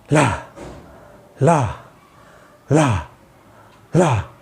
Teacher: जैसे ला ला ला ला, क्योंकि अगर इसमें क्या होगा, हमारी जो एयर होगी, हम झटके से जो हवा निकालेंगे वो पूरी मुंह से ही निकलेगी। अगर हम वैसे ल बोलेंगे तो नाक से निकल जाएगी, ठीक है, फिर वो न का उच्चारण ही होगा।